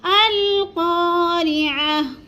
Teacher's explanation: قاف کو تھوڑا سا ہم نے لمبا کرنا ہے کیونکہ ادھر الف مد ہے۔ القارعہ، گول تا کو وقف کی صورت میں ہم نے ساکن کر کے پڑھنا ہے، یعنی جزم لگا دینی اوپر۔